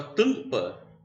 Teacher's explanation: eu tenho esse AM, que na realidade é o som do A nasalizado. Isso é um dígrafo.